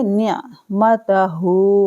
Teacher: ہا بھاری آواز میں پڑھا جائے گا اور الٹا پیش ہے، کھینچیں گے 2 سیکنڈ کے لیے